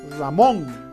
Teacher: En primer lugar, la mayor fuerza de voz está en la última sílaba. Ramón está en mon, ¿no? La mayor fuerza de voz está en mon. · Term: palabra aguda